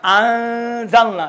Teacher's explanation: आप देखिए नून को बिल्कुल तलफ़ुज़ अदा नहीं है, अंज़लना नून बिल्कुल मख्फी होगा, नून का तलफ़ुज़ नहीं होगा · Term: इख्फा